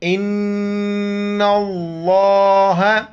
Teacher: لفظ اللہ سے پہلے جو حرف نون آ رہا ہے نون پر جو ہے نا زبر ہے تو لفظ اللہ موٹا کر کے پڑھیں گے امزہ کو نون کے ساتھ ملائیں گے اور نون کو لفظ · نون کو لفظ اللہ کے دوسرے لام کے ساتھ ملائیں گے الف اور لام کو بیچ میں نہیں پڑھیں گے